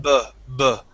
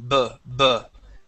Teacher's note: when we pronounce the b it's a BB okay and we feel a vibration